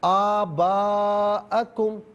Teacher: وہ اس کو مد کو کھینچنی تھی۔ ہاں، آ کو آپ نے ایک الف کی مقدار نہیں کھینچا تو وہ غلطی